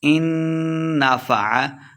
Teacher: نون مشدد ہے، غنہ کر کے پڑھیں گے